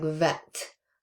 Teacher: the voiced version which is the voiced labio dental fricative which is vv.